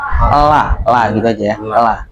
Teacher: La-nya itu apa namanya? Hanya ujung lidah menyentuh langit-langit, ujung lidah. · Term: lam biasa